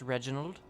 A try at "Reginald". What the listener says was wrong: You've got to roll the R, boy.